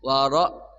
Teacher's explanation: Ra-nya bergetarnya antara 1 sampai 2 ya. Namanya takrir ya. Bergetarnya R tapi tidak berlebihan ya.